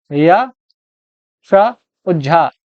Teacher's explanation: या, शा और झा, ये जो तीनों हैं ये तीनों आपकी तालव्य ध्वनियां हैं